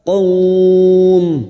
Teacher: setelah memanjangkan, bibir kita harus tertutup karena huruf mim